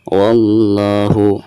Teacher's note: lam jalalah di sini dihukumi lam jalalah tabkhim ya, atau lam jalalah yang dibaca tebal, karena sebelum lam jalalah tersebut itu ada harakat fathah yaitu huruf wawu ya.